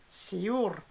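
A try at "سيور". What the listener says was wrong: C'est comme si tu vas dire Sioul. Tu dis Siour.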